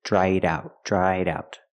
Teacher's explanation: I link the sounds with a fast d in the middle.